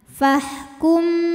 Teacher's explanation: ada hukum Ikhfa Syafawi karena ada mim sukun menghadapi huruf ba maka bunyi mim sukun ini didengungkan ditahan